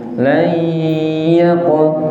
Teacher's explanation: nun sukun ketemu ya itu bi gunnah. Makanya ada mendengung layaqo. Jadi nanti diperiksa hidungnya masing-masing pas baca layaqo, enten dengerin betul.